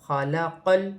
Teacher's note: لام ساکن ہے، لام کو قاف کے ساتھ ملا کر پڑھا جائے گا